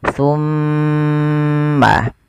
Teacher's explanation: Kapan terjadinya? Ketika ada mim, mim berharakat tasydid. Cara membacanya ditahan suara mimnya. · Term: bacaan gunnah